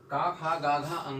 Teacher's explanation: जब हम का, खा, गा, घा, अंगा का उच्चारण करते हैं तो देखते हैं कि हमारी जो जीभ है यहाँ पर, कंठ से तो आवाज निकलती है, लेकिन जीभ का कोमल वाला हिस्सा जो होता है तालु का, वो गतिशील होता है। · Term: कोमल तालु